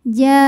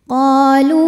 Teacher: Kum ada hukum idhar syafawi, sebab mim sukun menghadapi huruf selain mim dan ba, di mana di sini hurufnya adalah huruf qaf. Maka mim sukun tetap dibunyikan bunyi aslinya, bunyi m dan tidak ditahan. Ja'ukum qa hukumnya adalah mad tabi'i zahiri, sebab ada alif yang didahului harokat fathah, maka qaf panjang 2 harokat saja.